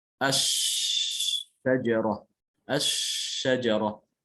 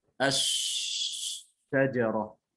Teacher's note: Ketika mengucapkan huruf jim dia tertutup, ya, ini. Kalau shin dia terbuka, dia tidak tertutup secara rapat, sehingga suaranya mengalir. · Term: huruf shin